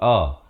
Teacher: Lafaznya hamzah baris atas, makhrajnya di pangkal kerongkong